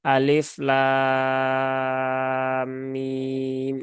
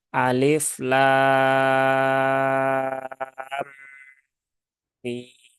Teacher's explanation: jadi antara lam dengan mim ditahan dulu 3 harokat, tunaikan dengungnya. Setelah itu baru tunaikan eh, mimnya. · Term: idgham mimi